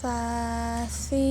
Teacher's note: Huruf sa, ujung lidah menempel di gigi seri atas.